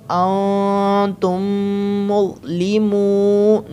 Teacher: میم ساکن ہے، اس کے بعد کیا ہے، دوسری میم ہے، گنہ کرنا ہے۔ اس کے علاوہ بھی میم مشدد ہے تو گنہ ہوگا ہی آلریڈی، ٹھیک ہے۔